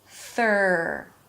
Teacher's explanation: bring the tongue out for the TH. It's a soft TH sound. Release air. And then pull the tongue in for the R. · There is no vowel. It's just a TH pulling in for an R. Third. For the R, the tongue pulls to the middle of the mouth, the lips round a bit, and the sides of the tongue push the insides of the upper teeth.